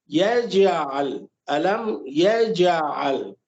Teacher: ایک ایکسٹرا، ایک زائد آواز نکالی جاتی ہے جس کو قلقلہ کہا جاتا ہے